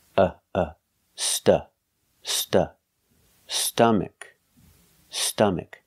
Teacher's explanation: it's a short sound uh like cup and up and cut